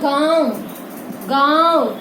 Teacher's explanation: वह ध्वनि जिसकी जो आवाज है वो नाक और मुंह दोनों से निकलती है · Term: अनुनासिक